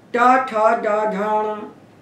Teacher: टा को बोलने में आपकी जीभ ने जिस जगह को छुआ है उसी का नाम मूर्धा है।